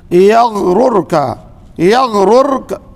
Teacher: غین میں قلقلہ نہیں ہونا چاہیے